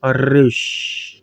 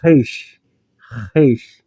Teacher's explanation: Esse Resh aqui, gente, ele é tanto lingual como gutural